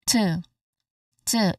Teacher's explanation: It's almost like the vowel sound is letter e. Okay. But it's not literally letter e. It's just in between o and e.